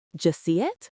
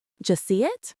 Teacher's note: In a fast conversation, that becomes just see it? The D and the Y merge. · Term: J sound